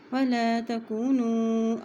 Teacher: نون کو لمبا کر رہے ہیں اس لیے کہ اس کے اوپر مد آ رہی ہے